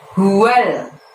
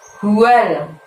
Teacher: Huwal, pendek-pendek. Hu-nya dari tenggorokan bagian dalam, jadi lebih tebel ya.